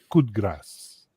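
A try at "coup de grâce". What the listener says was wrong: That's how you say it. You don't pronounce the d so hard.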